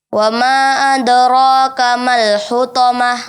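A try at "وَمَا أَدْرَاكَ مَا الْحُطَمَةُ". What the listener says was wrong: Wa ma di sini panjangnya 4 harakat. Wa ma adraka.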